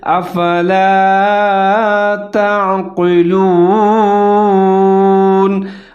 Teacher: आइन साकिन है, ता के साथ मिलाकर पढ़ना है और ज़हर करके पढ़ना है।